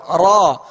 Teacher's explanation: بس ہلکی سی کپکپاہٹ ہو جب را کو ادا کریں تو زبان اس کے جب مخرج میں لگے تو ہلکی سی کپکپاہٹ ہو